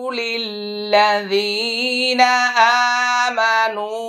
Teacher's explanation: এই জায়গায় ওয়াকফ করার কারণে 3 আলিফ টানটা 1 আলিফ করছি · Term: মাদ্দি মুনফাসিল